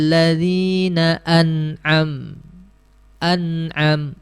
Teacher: tidak boleh ditahan tidak boleh didengungkan karena dia sifat asal izhar halqi adalah jelas